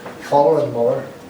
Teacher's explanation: The TH is becoming almost L